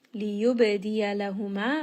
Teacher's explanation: ba here is going to have qalqalah. So, just give it a little bit of bounce. It is part of qutb jed.